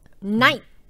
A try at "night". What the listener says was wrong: No, don't do T. You have to stop